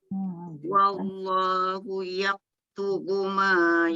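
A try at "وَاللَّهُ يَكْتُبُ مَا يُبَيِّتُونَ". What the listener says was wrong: Dia jangan tebal, dia jangan yak. Dia nipis je, yak ringankan dia.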